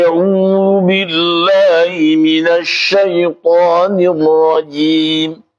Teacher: orang Mesir biasanya miring ke e